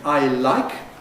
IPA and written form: aɪ ˈlaɪk (I like)